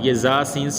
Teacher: یہ سیٹی والے حروف ہیں، ان کو آپ نے سختی سے پڑھنا ہے، سیٹی کی طرح تیز آواز نکلے۔